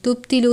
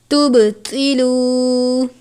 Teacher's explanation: تا کو سادہ پڑھیں گے، توا کو پر کر کے پڑھیں گے کیونکہ یہ حروف مستعلیہ میں سے ہے.